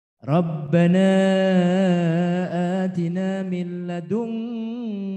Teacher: Pakai ng, ng. Kenapa pakai ng? Karena kaf. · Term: ikhfa ab'ad